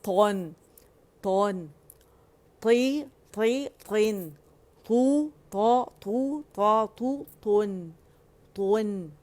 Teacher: تا موٹا ہوگا اور نون باریک ہوگا